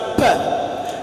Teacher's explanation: For example, we use the lips in pronouncing the sound p. The two lips are used, and so they are called bilabials.